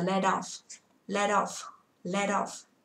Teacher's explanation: Từ này cô đọc là let đi với off, âm t kẹp giữa hai nguyên âm, đúng không ạ?